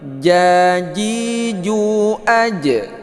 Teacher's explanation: Ja, ji, ju. Jangan sampai keluar angin. Dia itu tidak hamas. Makna hamas itu keluar angin, huruf jim.